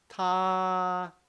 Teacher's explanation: if you want to pronounce the first tone, I want you to prolong, make it very, very long. Ta, because it's the highest part of your voice range, so you can make it very long.